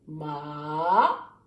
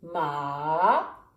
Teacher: the third tone is ma right you go down and up